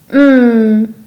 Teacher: is voiced meaning your vocal cords vibrate when producing the sound your tongue stays in the lower part of your mouth and your lips pressed together when pronouncing the sound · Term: the sound um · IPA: /m/